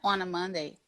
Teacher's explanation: O N, ele tem que ser tão bem pronunciado que ele já emenda com a próxima vogal